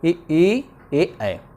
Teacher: जो जीभ के आगे वाले भाग से बोला जाता है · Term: अग्र स्वर